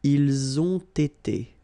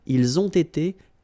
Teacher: You get first the liaison z, and then you get the t. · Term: double liaison